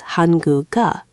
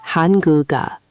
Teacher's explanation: that final consonant literally moves over and becomes the beginning sound of the next syllable. It's like the consonant is linking the two syllables together. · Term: liaison